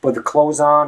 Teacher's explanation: closed it's as if you're saying closed or right so again just forget about the th and imagine you're just saying closed